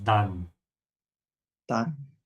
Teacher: Be careful with the A, you have to make an open A